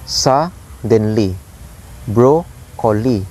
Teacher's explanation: dactylic is high, low, low. So 1 stressed syllables followed by 2 unstressed syllables. · 1 stressed syllables followed by 2 unstressed syllables. So the pattern here is high, low, low.